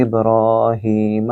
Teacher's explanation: ابراہیم، حضرت ابراہیم علیہ السلام کا نام با، کیونکہ اس کے اوپر جزم ہے، یعنی کہ کتب جد کے 5 حروف میں سے با بھی ہے، لہٰذا یہاں اس کو گونجتی آواز سے را کو لمبا کریں گے۔ ابراہیم، ہی کے آگے یا ہے، یا مد، اس کو بھی لمبا کریں گے